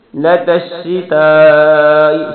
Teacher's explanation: شتا پہ بڑی مد ہے، اس لیے زیادہ اس کو لمبا کرنا ہے